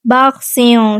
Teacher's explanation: باخسیوں سین پہ سیٹی کی آواز واضح کریں گے